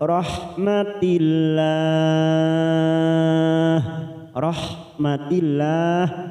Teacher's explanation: lam jalala karena didahuli kasrah maka kita baca tarkik tipis